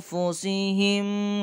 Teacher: anfusihim dibaca ikhfa karena nun sukun bertemu dengan fa, bacanya samar